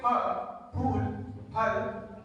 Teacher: both of your lips come together and they open into a small blast